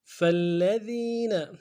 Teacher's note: لام کے اوپر تشدید زور دیں گے، اور ذال کو یا کے ساتھ ملانا ہے، یا مدہ ایک دال میں کھینچیں گے